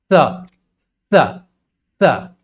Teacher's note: उच्चारण के समय जिह्वा जो है दंत के ऊपरी वाले दांत के जड़ को टच कर जाता है, जैसे बोलेंगे तो स स स, इसलिए इसे दंत्य स कहते हैं।